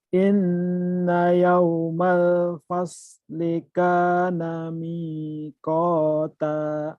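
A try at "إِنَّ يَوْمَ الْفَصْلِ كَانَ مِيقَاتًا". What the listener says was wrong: Ya tinggal soalnya aja bukan pas ya. Lihat, kalau kamu mulutnya tadi pas, harusnya fas, sod ya, fas. Kalau ngomong sod, bibirnya harus dilemut dulu, dilumat dulu, harus basah. Fas. Kalau kering, sodnya nggak keluar. Fas.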